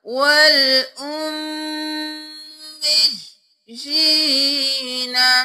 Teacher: آیت نمبر 22 میں ہی اگلا لفظ دیکھ لیجئے، والأمیجین، امیجین نہیں کرنا، میم پر تشدید ہے، اور پھر میج، پھر یا کو دو بار، جی یہاں پر میم مشدد ہے تو غنہ ہوگا